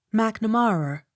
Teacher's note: Accent on third syllable.